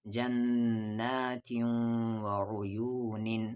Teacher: تنوین کے بعد واو ہے تو ادغام ہوگا غنے کے ساتھ، یعنی آواز کو ناک میں رکھیں گے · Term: ادغام غنے کے ساتھ